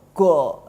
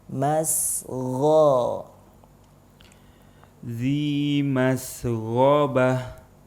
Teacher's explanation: Yang salah go, nggak ada alirannya, langsung go, nah, itu salah ya, karena ghain dia rokhawah atau mengalir. Masgho, ذي مسغبة.